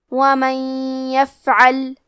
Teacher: ہم نون ساکن کو یا میں ملا کے غنہ اور تشدید کے ساتھ یہ حکم کو ادا کریں گے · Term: ادغام